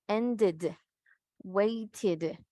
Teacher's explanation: Todos estos adjectives que terminen con D o T, pronunciamos la E como una I.